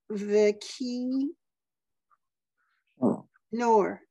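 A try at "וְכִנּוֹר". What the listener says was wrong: Just check out that last word. There's no dot in cough.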